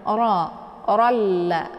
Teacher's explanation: ra yang berharakat fathah, ini dinamakan dengan ra bacaan tafkhim atau tebal ya. Jadi cara bacanya ujung lidah diangkat ke langit ya.